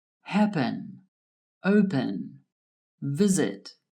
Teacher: The first syllables of these words are stressed.